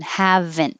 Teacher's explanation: You don't have to say the T. You just hold your tongue in the in position.